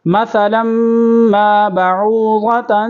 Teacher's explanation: مثلا، سا کو سا پڑھیں گے تلفظ کے ساتھ، مخارج کے ساتھ، اور لام کو میم کے ساتھ ملائیں گے، میم کے اوپر تشدید ہے، مشدد ہے، تو غنہ بھی کریں گے۔ مثلا ما بعوضة، یہاں پر اخفاء ہو رہا ہے۔